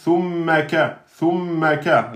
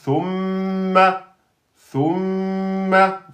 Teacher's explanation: mim, shadda, c'est comme noun, shadda. C'est donc du deux temps. Donc, c'est le seul avec le noun qui met deux temps quand il porte shadda, pas les autres.